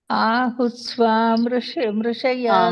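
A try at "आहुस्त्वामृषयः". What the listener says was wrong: ಅಲ್ಲಿ ನೋಡಿ ಮಾತಾಜಿ. ಆಹುಸ್ತ್ವಾಂ ಸಕ್ಕೆ ತವತ್ತು ಒತ್ತಿದೆ ಅಲ್ಲ. ಆಹುಸ್ತ್ವಾಂ.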